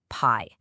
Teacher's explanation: Put your hand in front of your mouth and say the word pi. You feel that little explosion of air. That's aspiration.